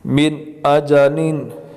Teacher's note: تو ہم نے قاعدہ پڑھا کہ جب نون ساکن کے بعد حمزہ ہوگا تو وہاں ادغام نہیں ہوگا، غنہ نہیں ہوگا، بلکہ اظہار ہوگا. تو نون کو بالکل ظاہر کر کے پڑھیں گے، ناک کے اندر چھپائیں گے نہیں